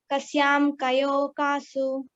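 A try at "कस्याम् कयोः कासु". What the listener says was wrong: Kasyam Kayoho Kasu. The Visarga has to be heard completely.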